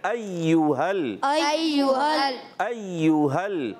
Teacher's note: या मुशद्दद ज़रा रुक कर भी अदा करेंगे, यहाँ पर पेश है और गोल हो जाएंगे